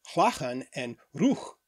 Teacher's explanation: So originally, words like laugh and rough, pronounced in Old English as chlachan and ruch, had a velar sound, specifically a velar fricative, made by partially blocking the air by placing the tongue close to the soft palate